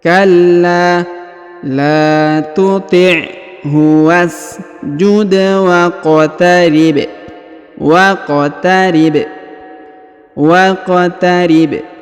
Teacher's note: huruf wa langsung sambung masuk ke huruf k yang harakat sukunnya lalu kita pantulkan